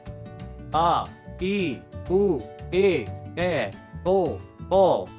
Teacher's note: 2 दीर्घ स्वर, जिन स्वरों को बोलने में ह्रस्व स्वर से दुगुना समय लगता है, उन्हें दीर्घ स्वर कहते हैं, जैसे आ, ई, उ, ए, ओ।